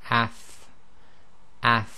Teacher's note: there's a continuation of the sound of the actual fa, and it's quite a soft sound